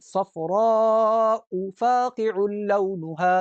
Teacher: صفراء کی جو الف ہے اس پر بڑی مد ہے، اس کو کھینچنا ہے